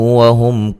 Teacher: وہم میم ساکن کا اظہار ہے، غنہ نہیں کریں گے